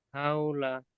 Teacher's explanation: ও সাকিনের ডান দিকে জাবার আছে, ও সাকিনের ডান দিকে জাবার আছে, এটি হলো অউলিন। অউলিনকে নরম আওয়াজে তাড়াতাড়ি পড়তে হয়